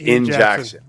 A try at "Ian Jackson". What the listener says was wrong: It sounded like In.